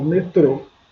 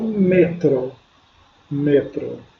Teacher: metrô, sílaba tônica tro, metro, sílaba tônica me